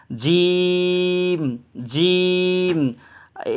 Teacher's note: এই জিম হরফটা আমরা উচ্চারণ করব জিহ্বার মাঝখান এবং তালুর মাঝখানে সমন্বয়ে আমরা উচ্চারণ করব, 3 আলিফ টেনে পড়ব ইনশাল্লাহ।